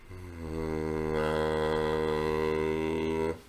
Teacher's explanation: say the word buzz again, but say it and phonate it through the nasal cavity